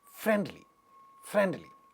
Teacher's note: the part which is carrying stress in this world friendly friendly so this word friend is stressed